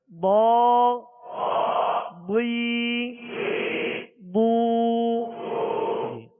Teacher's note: ضاد کا مخرج ہے زبان کی کروٹ اور اوپر کے داڑھوں کی جڑ، یہ الٹی جانب سے آسانی سے ادا ہوتا ہے، تو اس کو پر پڑھنا ہے، حروف مستعلیہ میں سے ہے۔